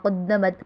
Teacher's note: قدمت میں دال مشدد ہے اس سے جما کے پڑھیں گے